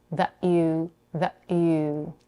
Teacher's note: She pronounces the final T in the word that as another glottal stop.